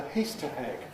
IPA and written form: ˈhiːstə heg (Easter egg)